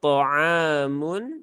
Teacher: ada Alif setelah fathah maka ainnya terbaca dua harakat thamun Mun I ini juga izhar halqi Maka jangan ditekan berlebihan